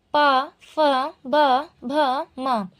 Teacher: जो ओष्ठ है वो पा, फ, ब, भ, म वर्णों के लिए होगा